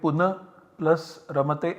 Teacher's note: Here we have ra at the end of the pada, punar followed by ra at the beginning of the second pada. In this case, ra gets deleted, and so we get puna plus ramate